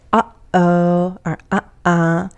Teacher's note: contractions that use a glottal stop this is typical of American English